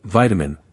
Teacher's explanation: That middle vowel becomes less clear and turns into the subtlewah.